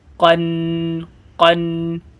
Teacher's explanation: قاف یہ بڑا والا کاف جس کو بولتے ہیں، اس زبان کی جڑ سے اسے ادا کریں گے. قاف دو زبر قن قن.